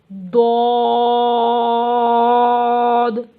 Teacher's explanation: ضاد زبان کی کروٹ اور اوپر کی داڑھوں کی جڑ سے۔